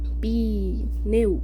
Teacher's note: A gente faz 2 rajadas de ar, cara.